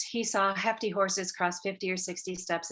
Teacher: you'll hear that breathy break between voiceless consonants and vowels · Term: voiceless consonant task